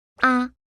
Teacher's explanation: It is shorter than the other tones. Your voice should be gentle with no rising or falling.